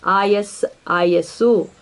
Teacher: ಪದಗಳ ಕೊನೆಯ ಸಕಾರವನ್ನು ಸು ಎಂಬುದಾಗಿ ಬದಲಾಯಿಸುತ್ತೇವೆ